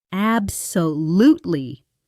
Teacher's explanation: Absolutely ab-so-LUTE-ly (learn the WHOLE word's rhythm) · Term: Stress Patterns